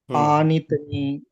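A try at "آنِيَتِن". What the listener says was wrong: ఆని. మధ్యలో ఒక అక్షరం విడిచిపెట్టేస్తున్నారు మీరు. ఈ అక్షరం ఏమిటి? ఆనియతిన్.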